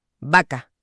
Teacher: si alguien pronuncia la palabra vaca con fuerza y de forma aislada, hará un cierre bilavial explosivo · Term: cierre bilabial explosivo